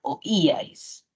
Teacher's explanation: Ajá muy bien muchas gracias oíais lo que pasa es que si identificamos la mayor fuerza de voz está en la i